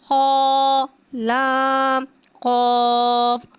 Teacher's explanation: قاف حرف مستعالیہ ہے، لہذا اس کی آواز حلق سے موٹی ادا ہوئے گی